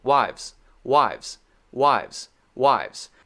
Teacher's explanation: directly to the z sound there's no break